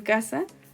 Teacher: grafía del español en la AFI se representa con una K se entiende Como una oclusiva velar sorda